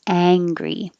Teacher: Ang has the ah vowel, so keep your lips back.